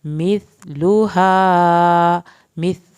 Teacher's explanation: था को ज़बान की नोक से अदा करेंगे, लाम की पेश को नहीं खींचना, हा अलिफ को खींचना है।